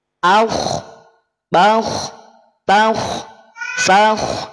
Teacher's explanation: istila itu adalah ketika pangkal lidah terangkat ketika pangkal lidah naik atau terangkat maka konsekuensinya huruf k dibaca tebal